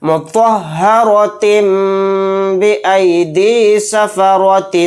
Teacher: تا کو میم کے ساتھ ملا کر غنہ اور اخفا کے ساتھ پڑھیں گے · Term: اقلاب